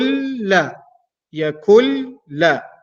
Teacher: the noon sound is gone completely that's why I'm not pronouncing the noon because of the ruling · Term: merging